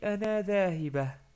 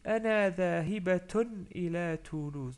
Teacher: comme je continue la phrase, je dis Ana dhahibatun ila Toulouse. Donc je prononce bien la ta marbouta.